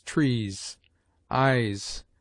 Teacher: S, single, at the end of words, has a grosser sound, like that of Z